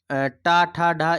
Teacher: ट ठ ढ ये सब जो होती हैं ये मूर्धन्य में आती